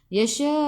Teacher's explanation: bila matikan hamzah kena baca dengan putus tau, macam baca dengan tahan nafas